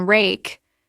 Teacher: For the R sound, like in rake, the tongue pulls back and tenses, but it doesn't touch anything.